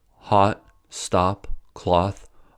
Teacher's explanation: For example, the British back open rounded vowel aw does not exist in American English. In Britain, words like hot, stop, cloth are all pronounced with aw sound. In America, they are all pronounced with the ah sound. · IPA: /ɒ/